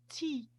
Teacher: Et par contre, celles qui sont, je ne sais pas comment on les appelle, les fortes, c'est plus proche des consonnes anglaises. Genre coffee, parce qu'il y a de l'expiration d'air.